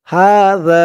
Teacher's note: আর এই জালের আওয়াজটা একদম নরম পাতলা করতে হবে জিহ্বার মাথা উপরের দাঁতের মাথার সাথে লাগবে জালের উচ্চারণটা করার সময়